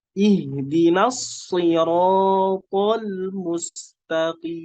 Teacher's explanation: Ihdinas itu bertasydid, jadi diberikan nabrohnya, diberikan tekanannya.